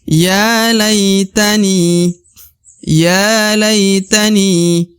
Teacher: Di depan huruf ni terdapat ya sukun atau ya mati. Maka ni dipanjangkan 2 harokat ya.